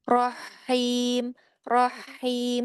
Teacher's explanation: Tampakkan hamas pada ha di akhir